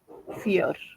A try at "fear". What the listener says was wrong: So here the way fear has, like you pronounced, it sounds me like a fair. But it has to be fear. to say a long sound like this. Fear.